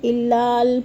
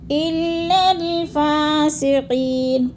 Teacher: لام کو لام کے ساتھ ملا کے پڑھنا ہے، درمیان والے 2 لام زائد ہیں، لکھنے میں آتے ہیں، پڑھنے میں نہیں آتے۔